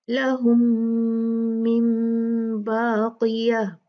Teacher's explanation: میم اور میم کا ادغام ہے، ادغام شفوی. اچھے سے 2 کاؤنٹ غنہ کریں گے